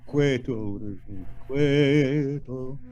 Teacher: Make sure you don't give me a double T, not quieto, quieto, just a single T, and the stress is on the quie, on the K, quieto, quieto.